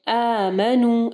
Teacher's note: یہ جو ہے مد اصلی کی قسم ہے، ٹھیک ہے، تو اس کو ہم لوگ دو حرکات کے برابر اس کو ہم لوگ سٹریچ کرتے ہیں